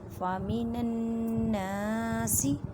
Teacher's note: نون مشدد گننے کا مطلب آواز کو ناک میں لے کے جانا ایک الف کی مقدار میں